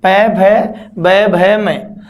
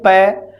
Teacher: जब हम इनका उच्चारण करेंगे तो हमारे होठ दोनों आपस में मिलान करते हैं, मिले बिना इनका उच्चारण होता ही नहीं है। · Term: ओष्ठ वर्ण